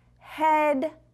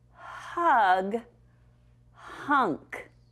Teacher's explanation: So the one word that does not belong was head 'cause it had the eh sound but hug and hunk had the uh sound.